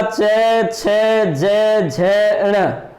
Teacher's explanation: तालु से निकलने वाली ध्वनियां और तालव्य ध्वनि कहलाती है।